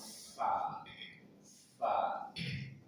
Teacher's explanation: ujung gigi saya ke atas bertemu dengan perut bibir bagian bawah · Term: huruf fa